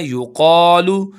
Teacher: قاف کو ایک الف کے برابر کھینچیں گے